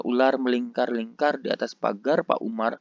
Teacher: Orang Indonesia akan menggunakan bunyi R, ya, roll consonant di sana.